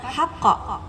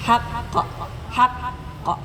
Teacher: Karena ada tasdid tahan dulu sebentar.